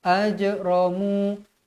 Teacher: Jim pun huruf Qalqalah jadi wajib dibaca melantun ajramu mu berhenti dengan kadar dua harakat ajramu jangan baca ajramu